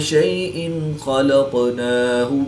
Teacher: دو زیر کی تنوین کے بعد خا حروف حلقی میں سے ہے تو یہاں پر اظہار ہوگا یعنی غنہ نہیں کریں گے بلکہ تنوین کو ظاہر کر کے پڑھیں گے۔